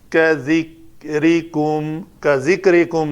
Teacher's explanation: را پتلی ہوگی کیونکہ را کے نیچے زیر ہے